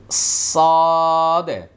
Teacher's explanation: সদ বলার সময় আওয়াজটা মোটা হবে এবং ভিতরে বাতাসটা কন্ট্রোল করতে হবে।